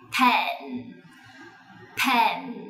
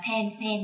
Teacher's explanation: Các ba mẹ hãy nhớ là âm p chúng ta bật hơi lên này